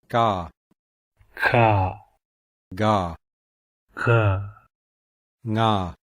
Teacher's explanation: The gutturals are formed at the back of the mouth, and these are also called velars.